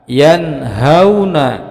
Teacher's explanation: dengan huruf H salah satu dari huruf yang enam huruf halqi maka cara membacanya juga jelas tidak mendengung dan pendek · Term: izhar halqi